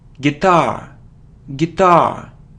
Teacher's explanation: the stress is on the second syllable guitar